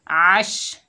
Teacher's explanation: शीन की आवाज़ फैलती हुई महसूस होती है · आइन को हलक से अदा करेंगे